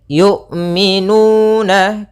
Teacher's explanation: Bagaimana cara melafalkan hamzah? Yaitu dari pangkal, makhrajnya adalah pangkal tenggorokan kita yang dekat dengan dada.